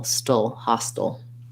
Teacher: So hostile can be either ha-style or hostile or hostile with a schwa at the end. Almost no vowel there, kind of going right from the st to the ul